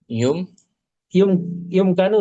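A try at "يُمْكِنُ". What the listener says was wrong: Di kasrah kafnya.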